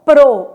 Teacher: P é uma consoante bilabial